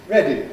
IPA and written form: ˈredi (ready)